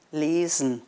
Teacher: «Lesen», also «lesen», Hochdeutsch, ist ja mit dem stimmhaften «s»